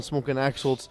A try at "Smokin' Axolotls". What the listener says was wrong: Smokin' Axolotls. There's an L after the T.